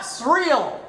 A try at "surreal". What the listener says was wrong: You roll the R. Not ye.